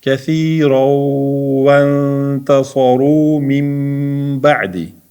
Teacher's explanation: Endi sukunlik nundan keyin t harfi kelsa, bugungi o'tganimiz ixfo bo'ladi.